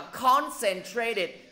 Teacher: Thầy đã nói rất là rõ là nhấn vô âm tiết thứ nhất